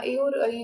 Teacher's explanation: कंठ से भी बोले जाएंगे और तालू से दोनों से बोले जाएंगे कंठ और तालू दोनों को मिला कर के और ई बोल